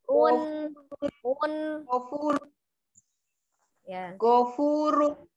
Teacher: Tapi gofurun, run balik nunnya. Run nih ujung lidahnya nempel di gusi atas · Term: nun sukunnya